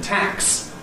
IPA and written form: tæks (tax)